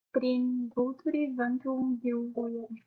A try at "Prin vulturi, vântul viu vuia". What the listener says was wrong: Yeah, you still don't like this final I, but that's all right. This final I here. You still pronounce it as vulturi instead of vulturi.